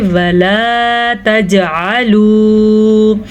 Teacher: وَلَا اتنا لمبا آپ نے کرنا ہے کیونکہ لام کے ساتھ الف بھی ہے. اگر سادہ لام ہو تو وہ پڑھا جاتا ہے وَلا. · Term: الف مدہ